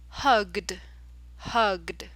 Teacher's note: G is a voiced sound so that means that you have to put a D sound at the end of the word